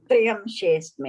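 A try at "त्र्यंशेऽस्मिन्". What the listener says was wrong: No, not Triya. Yeah, it's like T-R-Y. I think the way you are saying it's T-R-I. Triya, you are saying. T-R-I-Y-A, you are saying. I'm saying T-R-Y-A. Tremshesmin.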